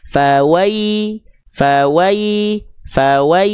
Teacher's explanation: Ini nama sifatnya lin, lembut. Bacaannya lembut, jelaskan vokal i pada ya sukunnya.